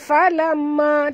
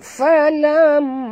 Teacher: mim bertasydid wajib dengung dua harakat. Dengung dulu baru kita sebut ma.